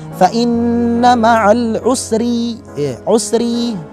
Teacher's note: Adapun di kalimat al-usri, ro-nya di sini berupa ro yang tipis. Kenapa? Karena harokat ro tersebut berupa harokat kasroh. Jadi cara membacanya adalah fa inna ma'al usri, usri.